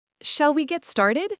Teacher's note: Shall is slightly formal but friendly. And notice the rising intonation at the end. It's a genuine question seeking agreement.